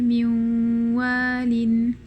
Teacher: So you're using the mouth for waw and the ghunna simultaneously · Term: idgham naqis